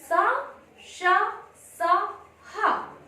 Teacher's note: इनके उच्चारण में मुंह से गर्म श्वास निकलती है। · जब हम इन वर्णों का उच्चारण करते हैं तो हमारे कंठ में घर्षण उत्पन्न होता है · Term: उष्ण व्यंजन